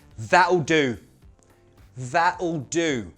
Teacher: I've used a glottal T, you don't have to.